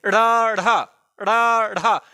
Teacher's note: जब हम इनका उच्चारण करते हैं तो हमारी जीभ जो है बड़ी वेग के साथ बाहर को फेंकी जाती है। ठीक है, ड़ ढ बोल के देखिए, ड़ ढ, जीभ झटका खा रही है। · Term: फेंके हुए वर्ण